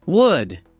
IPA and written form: wʊd (wood)